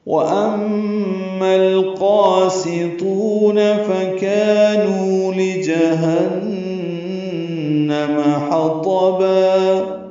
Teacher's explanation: نو واو مدہ ہے، 2 حرکات یہ بھی لمبے کریں گے، لِجَهَنَّمْ لام کو جلدی پڑھنا ہے، نون مشدد پہ غنہ کرنا ہے ، میم کی زبر جلدی پڑھیں گے، حَطَبَ حا وسط حلق